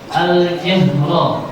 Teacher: Al-jahra, ro-nya dibaca Tafhim sebab huruf fathah